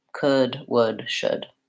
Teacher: All of these have that silent L. So they are just the vowel and going right into the final D.